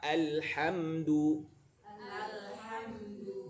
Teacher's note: Durasi lam sama mim harus sama karena sama-sama tawasud.